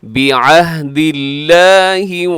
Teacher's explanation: یشترون بعہد اللہ، لفظ اللہ باریک ہے، اس سے پہلے دال کے نیچے زیر ہے، اس لیے لفظ اللہ کو آپ پر نہیں پڑھیں گے بلکہ باریک، بہت باریک کر کے پڑھیں گے